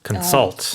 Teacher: And the stress is on the second syllable.